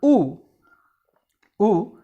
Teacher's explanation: Coming to u, the position is between close and half close